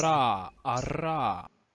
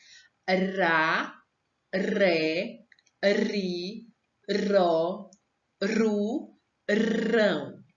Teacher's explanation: esse som da letrinha R é que faz a nossa língua tremer